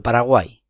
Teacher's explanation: se agrupan tres vocales de las cuales justo la intermedia la del centro es tónica y las dos otras es decir las que están en los márgenes serían átonas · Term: triptongo